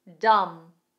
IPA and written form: dʌm (Dumb)